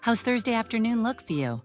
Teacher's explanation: Does disappears. We drop the helping verb.